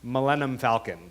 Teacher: I basically shorten the last two syllables at the end.